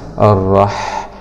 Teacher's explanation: لام سكون شمسية مدغمة في الراء المشددة مع الفتح الراء. حاء سكون مع الهمس